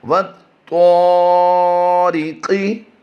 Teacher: وَالطَّاء، ری کی آواز باریک دیں گے، را کے نیچے زیر ہو تو را باریک پڑی جاتی ہے۔ قاف کی ادائیگی ہم پھر پور کریں گے · الف مدہ ہونے کی وجہ سے اسے لمبا بھی کریں گے